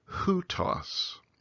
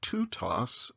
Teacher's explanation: an original tau a t sound got dropped off the beginning